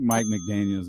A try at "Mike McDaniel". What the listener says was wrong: No S. Mike McDaniel.